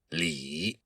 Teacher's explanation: This all goes back to an old Chinese word that Confucius used, li, kind of like L-I, and you have to say that I sound with a very low tone. It's the third tone in Mandarin Chinese.